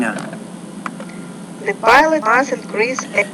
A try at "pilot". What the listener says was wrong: Now the word pilot, you need to pronounce that with more air. So the pilot must.